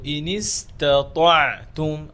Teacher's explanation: প্রথমে পাতলা হরফ, এরপরে হচ্ছে ত মোটা, আবার আইন পাতলা হরফ। তো ইনিস্তাতাআতুম আইনটা গলার মাঝখানে